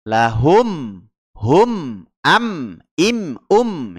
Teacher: huruf mim itu sendiri memiliki sifat ya syafatan ya terdapat di dua bibir ya jadi mingkem bibirnya lahum Hum am Im Um ya bibirnya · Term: izhar syafawi